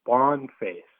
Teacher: you're just hearing that lack of R, which is common to the former British Empire